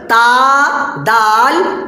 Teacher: زبان کی نوک اور اوپر کے سامنے والے دو دانت کی جڑ سے مل کر تا، دال، تا ادا ہوتا ہے